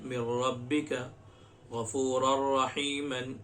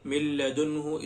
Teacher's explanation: 4 تنوین یا نون ساکن کے بعد اگر حروف یرملون میں سے کوئی حرف آ جائے تو لام اور را کی صورت میں بغیر غنہ کے ملا کر پڑھیں گے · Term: ادغام بلا غنہ